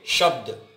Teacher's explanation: दूसरा है शब्द है, ये शब्द, शब्द में बड़ा शय है। देखिए, जब हम शब्द बोलते हैं तो जीभ थोड़ा हमारी पीछे चली जाती है, तालु से लगती है। शब्द बोल के देखेंगे, शब्द, तो ये हमारी तालु की सहायता से बड़े शय को हमारी जीभ स्पर्श करके बोलती है।